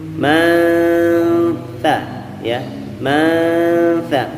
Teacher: huruf ta ujung lidah nempel ke gigi seri atas